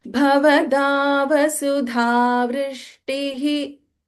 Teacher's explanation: Bha is Mahaprana, Da is Alpaprana. You should not chant Da as Mahaprana.